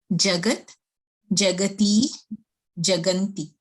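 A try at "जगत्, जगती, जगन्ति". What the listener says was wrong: Samichinam.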